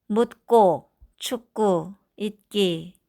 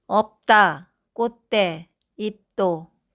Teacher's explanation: 이렇게 예사소리가 앞에 있는 닫힌 소리 때문에 된소리로 바뀝니다